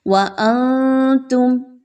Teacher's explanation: اخفا، نون کی آواز کو کلیئر نہیں پڑھا جائے گا، چھپا کے پڑھیں گے